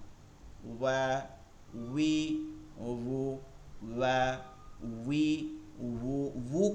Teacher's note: ঠোঁটটা গোল হয়ে যাবে ঠোঁটটা গোল হবে এবং এক আঙ্গুল পরিমাণে এই যে এই ছোট আঙ্গুল আছে এই পরিমাণে আপনারা মাঝখানে ফাঁকা রাখবেন